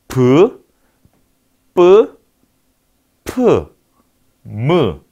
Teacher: 자, 방해를 받는 위치가 그러면 두 개의 입술이 되겠죠. 자, 두 입술이 조음에 관계하는 소리를 우리는 양순음이라고 합니다